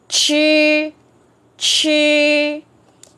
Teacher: Đài Loan viết như thế còn bên Trung viết c h phải uốn lưỡi mà còn bật hơi ra ý là cái âm của nó mạnh hơn đó